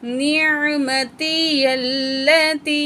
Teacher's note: یا کو لام مشدد سے ملائیں گے